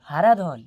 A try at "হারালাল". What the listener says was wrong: হারাধন নয় স্যার, হারালাল, হারালাল। আবার ধন ধরছেন, ধন ছাড়ুন, ধনটা কেটে লাল করুন।